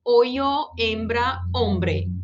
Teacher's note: O H, ele não tem sonido alguno, não se aspira, não se pronuncia.